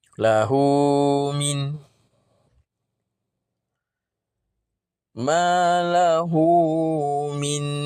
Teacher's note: Ini mad silah qasirah. Ha dhamir bertemu dengan huruf selain daripada hamzah atau alif. Jadi bacaannya dua harakat juga.